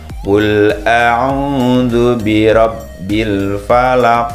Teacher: bacaan Qalqalah tepatnya qolqolah kubro jadi memantul lebih terasa